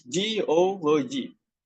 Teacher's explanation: the suffix logy pulls stress to the syllable before it